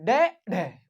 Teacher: उत्क्षिप्त ड और ढ जिसे बोलने में थोड़ा कम समय लगे